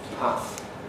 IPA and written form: pæθ (path)